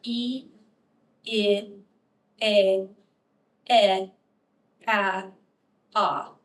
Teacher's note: if you read the front unrounded vowels from top to bottom you'll have e e a e a ah and you see how my mouth just incrementally gets bigger